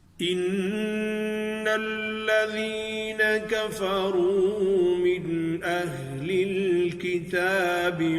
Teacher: انا پر غنہ کریں گے، آواز تھوڑی دیر انا پر ٹھہرے گی